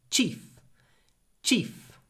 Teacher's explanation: With a very short e before the unvoiced f.